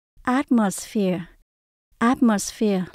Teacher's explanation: âm đầu tiên là at đây là trọng âm luôn chúng ta lên cao